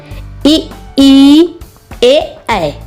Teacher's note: अग्र स्वर, जीभ के अगले हिस्से से जो पढ़ते हैं।